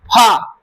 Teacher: फ होठ पर ओठ टच कर रहा है तो इस नाते ओष्ठ वर्ण का है। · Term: ओष्ठ वर्ग